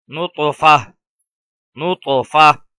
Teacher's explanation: اگر وقف کریں گے تو وقف میں اس گول تا کو ہا ساکن سے بدل دیں گے